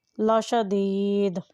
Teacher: دال یہاں پر ساکن ہو جائے گی، اور جب دال ساکن ہو تو وہ حرف قلقلہ بن جاتا ہے۔ لاشدید، اس کی آواز کو ہلا کر ادا کریں۔